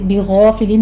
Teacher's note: بغافلین میں غین پر ہے، الف بھی پر ہو جائے گا ساتھ میں،